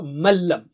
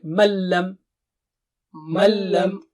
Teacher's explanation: مین کو من لم نہیں پڑھ سکتے، تو ملم یعنی نون ساکنہ نہیں پڑھیں گے